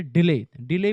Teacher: डिले में डी पर कम जोर लगता है और ले पर ज्यादा जोर लगता है, इसे ही आयम्बिक या इयाम्बिक लय भी कहते हैं।